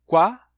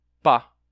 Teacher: se você faz o som qua e passa a tocar os lábios, você já faz pá